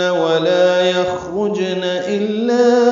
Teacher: ولا یخرجن الا میں لا الف مدہ ہے اور اس کے بعد حمزہ آنے کی وجہ سے مد منفصل ہے